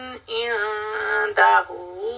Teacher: ये ह की साउंड आपकी चेस्ट से आनी चाहिए।